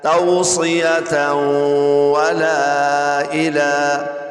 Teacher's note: تنوین کے بعد حروف جر ملون میں سے واو آ رہی ہے، غنہ ہوگا